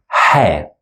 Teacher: and we pronounce it as ha. It's one of the throat sounds, and it's coming out from the middle throat, to be specific.